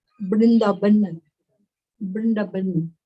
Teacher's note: So in Bengali, the va and the ba, they are being interchanged. And in Sanskrit, the va and ba, they are considered same.